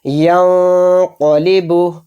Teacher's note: اس نون کی آواز کو ناک میں چھپا کر پڑھیں گے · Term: اخفا